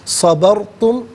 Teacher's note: را ساکن ما قبل با پر زبر ہے تو را ساکن کو پر کر کے پڑھیں گے